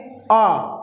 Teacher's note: जब आ स्वर का उच्चारण किया जाता है तो मुंह बिल्कुल बड़ा, बहुत ज़्यादा अधिक खुलता है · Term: विवृत स्वर